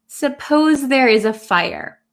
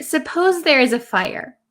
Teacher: there is no question mark and our intonation does not go up like a question so if i say what if there's a fire what if